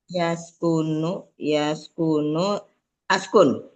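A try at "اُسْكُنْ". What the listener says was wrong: Uskun dibacanya alifnya domah karena domah di tengahnya.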